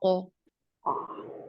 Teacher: کیا, او اور کیا, اس کا آپ نے ڈفرنس ضرور ذہن میں رکھنا ہے کہ او لحاظ کے بالکل پیچھے, یعنی کوے کے پاس کے ایریا سے جب آپ کی زبان کی جڑ ٹچ کرتی ہے تو پھر یہ ادا ہوتا ہے قو.